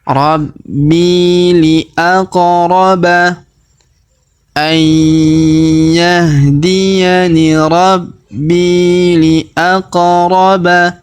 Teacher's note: Perhatikan huruf qa berharokat sukun, maka kita pantulkan atau kita qalqalahkan. Karena huruf qa yang berharokat sukun termasuk adalah huruf-huruf pantul ya.